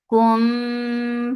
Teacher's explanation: this is ikhfa shafawi. So keep the sound in your nose for a longer time.